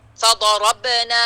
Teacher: تو اس کو یہاں دھیان دینا، فا فا فا کو باریک رکھنا، ضاد کو بہت زیادہ موٹا، پھر اس کے بعد را، ٹھیک ہے، پھر اس کے بعد را کو، یعنی را ضاد سے ہلکا پر ہوئے گا، فا باریک، ضا بہت پر، را ضاد سے ہلکا. فضربنا، با پہ قلقلہ، اور نا الف مدیہ 2 کاؤنٹ. اب نون آ رہا ہے، اس کے بعد یہ جو الف مدیہ آ رہی ہے، اس کو ہم نے ناک سے نہیں نکالنا، نا نہیں ہوئے گا، نا.